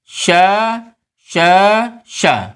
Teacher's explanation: अधिक प्राणवायु की आवश्यकता है, महाप्राण है लेकिन ये पहुँचे जाकर के अघोष में